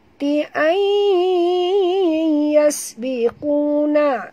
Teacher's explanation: Kita kena masukkan sepenuhnya bunyi nun ke dalam ya. Disertai dengung idgham ma'al gunah.